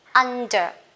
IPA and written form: ˈʌndə (under)